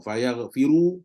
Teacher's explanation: kalau sambung fayar firu, maka ra akan jadi tebal. Sebab apa? Ra dhammah.